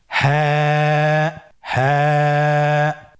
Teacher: হা হরফটি উচ্চারণের স্থান কন্ঠনালীর শুরু হতে